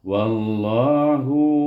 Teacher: Sebelum nama Allah ini di bubuh waw di sana baris di atas, maka kita baca dengan tebal, idghamkan waw ini kepada huruf lam.